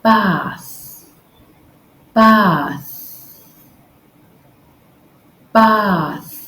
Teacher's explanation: now let's try the voiceless th remember the same position so your tongue between your teeth gently touching against your Upper Front Teeth just blow air out no voice no vibration just air